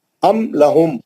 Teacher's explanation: میم ساکن کے بعد حرف لام آیا, اظہار شفی ہو گیا. بغیر غننے کے میم کو ظاہر کریں گے.